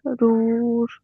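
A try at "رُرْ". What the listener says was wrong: রুর বলে টান হবে না, র র পেশ রুর।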